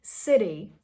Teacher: not a very strong duh sound, but a very soft duh sound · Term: flap T sound